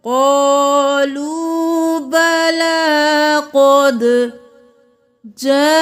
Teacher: جاءنا 5 انگلیوں کے برابر کھینچیں